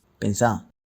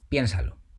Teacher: To get the vos imperative form, you remove the final R from the infinitive form and the stress falls on the final syllable